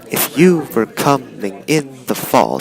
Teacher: every second syllable is stressed, and that's an iamb.